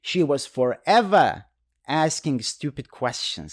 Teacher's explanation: again the tone goes up and it shows you are not happy about this situation